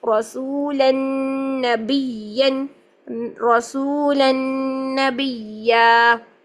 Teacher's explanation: رسولاً یہاں پر غنہ کیا، ادغام مال غنہ ہو رہا ہے، تنوین کے بعد نون آ رہا ہے